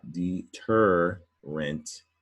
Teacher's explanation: three syllable word stress on the middle syllable